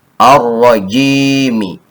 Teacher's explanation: Jim ya sukun kasroh ji dibaca panjang 2 harokat karena kasroh bertemu dengan ya sukun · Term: mad tabi'i